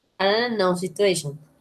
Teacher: the Americans don't say T, the Americans say R. So you link the T with the N, ¿ok?